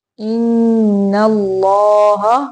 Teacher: अल्लाह का लाम मोटा पढ़ेंगे